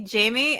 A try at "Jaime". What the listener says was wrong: The J is an H. The J in Spanish is pronounced like an H in most.